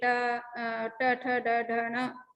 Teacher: ये यहाँ मूर्धन्य यानी मूर्धा से पैदा होते हैं, सेरेब्रल से, सेरेब्रम से। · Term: सेरेब्रल लेटर्स